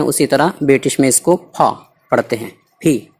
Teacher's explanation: یہ پھول والی پی ہے، یعنی جو پھول میں جو ہم ہلکی سی ہا کی آواز ہوتی ہے